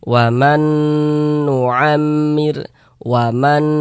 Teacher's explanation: Kemudian digunakan tuh suaranya itu kita tahan sejenak, kita panjangkan, kita dengungkan. Waman, di bagian mannya itu kita tahan, Kita panjangkan kira-kira sepanjang 2 harokat. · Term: idgham bi gunnah